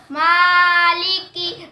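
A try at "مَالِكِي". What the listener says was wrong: नाक में ना पढ़ो माँ, मालिकी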